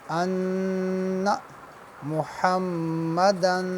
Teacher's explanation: نون مشدد ہے اور محمدن میم مشدد ہے، لہٰذا نون مشدد اور میم مشدد کے اوپر غنہ ہوگا